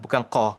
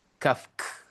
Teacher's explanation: huruf kaf ni dia ada hams. Dia ada bunyi bunyi hembusan sedikit berbanding dengan huruf qaf. Qaf ada qalqalah.